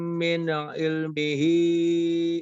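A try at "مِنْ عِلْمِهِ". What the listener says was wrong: Oke, di kata min ilmihi, nunnya kalau bisa tidak dipantulkan ya. Min ilmihi, jangan min'i, tapi min ilmihi illa bima syaa.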